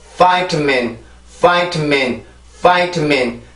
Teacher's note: 3음절이고요. 강세는 첫 번째 음절에 있습니다. 그러면 큰 리듬이 하나, 작은 리듬이 두 개가 있죠.